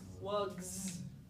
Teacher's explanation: listen to that sound at the end is that an s it's a z sound